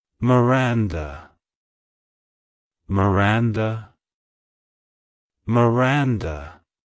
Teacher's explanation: kindness It's pronounced as Miranda Miranda Miranda to pronounce it correctly emphasize the second syllable ran and use a soft uh sound at the end